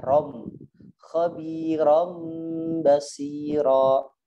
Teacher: Khabiran harusnya ron basi, ron nun kan? Ini diganti menjadi mim, rom ya, rom.